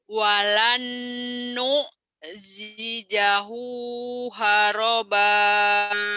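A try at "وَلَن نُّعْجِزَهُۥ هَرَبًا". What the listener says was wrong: Oke, cuman yang kurangnya jimnya kurang keras. Bedakan antara jim dan zai. Ini keras, ini rapuh. Walan jizahu haroba. Jizahu. Yang pertama keras, yang kedua rapuh. Walan jizahu. Jiza.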